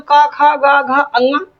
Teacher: जैसे का वर्ग की बात करें तो का, खा, गा, घा, अंगा, इनका उच्चारण स्थान कंठ है